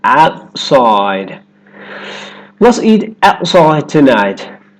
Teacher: The tongue stays up for the T and goes straight into the S sound. Outside. Let's eat outside tonight. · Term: held T